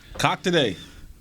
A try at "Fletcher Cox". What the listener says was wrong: It's with an X. You didn't put an X on it.